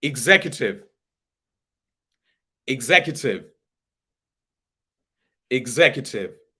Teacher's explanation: Put the stress on Zek, the Z part.